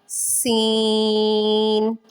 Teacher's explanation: سین کو تھوڑا لمبا کر کے پڑھیں گے، سیٹی کی آواز نکالیں گے